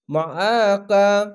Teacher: আইনটিকে মোটা করে গলা চিপে পড়বেন